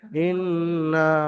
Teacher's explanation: নুনের উপরে যেন টান হবে না কিন্তু গুন্না হবে এক আলিফ